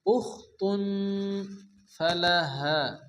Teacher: তানবিনের পরে হরফে ইকফার 5 অক্ষরের মধ্যে ফা আসছে, এক আলিফ গুন্না হবে। উখতুন ফালাহা, হা আলিফ জবর হা আলিফ মাদ্দা এক আলিফ টেনে পড়তে হবে।